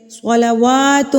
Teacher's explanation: کھڑی زبر کو ہم ایک حرکت کے برابر کھینچ کے پڑھتے ہیں